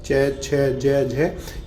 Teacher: जो च वर्ग है पूरा पूरा च वर्ग है वो क्या है तालव्य होता है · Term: तालव्य व्यंजन